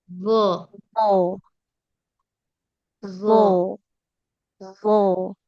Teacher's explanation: lo ditempelkan ke ujung gigi seri atas. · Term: huruf lo